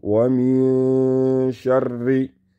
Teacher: The sheen came after the noon sakin, and therefore the noon is silent, and the sheen has a light nasalization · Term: ikhfa